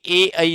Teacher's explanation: ए ऐ जो है वो कहां से बोला जाएगा? तो यह कंठ तालु से बोला जाएगा। मतलब ये इसका उच्चारण स्थान जो है वो दोनों जगह से होगा।